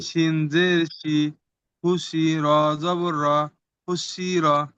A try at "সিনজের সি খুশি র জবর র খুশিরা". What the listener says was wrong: মাশাআল্লাহ মাশাআল্লাহ।